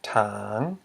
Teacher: Because we have a high consonant, t, plus a live syllable, which equals a rising tone.